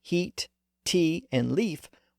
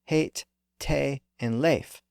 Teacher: in Ireland most of these EA words retained that old a sound they didn't experience that second shift up to e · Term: Irish pronunciation